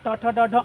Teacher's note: मुर्धन्य स इनका उच्चारण स्थान क्या होगा मुर्धा समझ में आया यानी मुर्धा स्थान से जन्य होते हैं